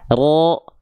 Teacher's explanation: Mulut kita nggak perlu pakai monyong-monyong. Jadi pangkal lidah kita yang naik yang membuat karakter huruf tebal terdengar tebal. Nggak pakai monyong, ro, mulut kita cukup dibuka saja.